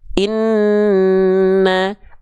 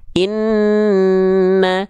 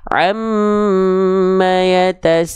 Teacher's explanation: Huruf nun ya dan huruf mim, ketika mereka bertasydid baru mereka harus ditahan dua harokat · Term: gunnah